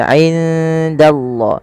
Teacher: Nun mati bertemu dengan dal. Samarkan nunnya kepada huruf dal karena ia ada bacaan ikhfa yang di mana suara nunnya samarkan kepada huruf dal.